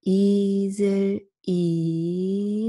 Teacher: You open up a little bit more, but not much. It's a half-closed vowel.